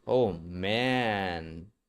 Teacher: For the a vowel. The back of the tongue is a little higher. Have a little higher.